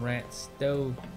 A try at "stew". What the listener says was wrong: Stow? Sounds like you're trying to mix like stew and stow together.